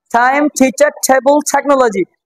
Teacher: যতগুলো জায়গায় ট আছে ট গুলো সব ঠ হয় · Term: ঠ উচ্চারণ